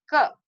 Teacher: क में हमारी जिह्वा ऊपर जाकर के हमारे तालू के पीछे के मूर्धा के हिस्से को टच करती है, इसलिए स्पर्श व्यंजन कहे जाते हैं।